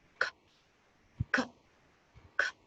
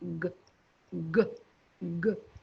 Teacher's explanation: You will find k is voiceless and g is voiced.